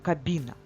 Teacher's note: в слові кабіна є М'який приголосний звук бь він позначений двома рисочками я обведу його також М'який приголосний звук